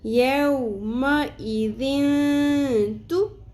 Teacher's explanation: ہے، اس لیے یہاں پہ ہم اخفاء مع الغنہ کریں گے، تنوین کی آواز کو ناک میں چھپائیں گے بھی اور کھینچیں گے بھی